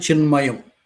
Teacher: ఈ మయాలో మకారము ప్రత్యయ సంబంధమైన మకారం అయింది అనునాసిక అనునాసిక పరంగా ఉండగా చిత్తులో తకారానికి అనునాసిక వర్ణం నకారం వస్తుంది చిన్మయం అవుతుంది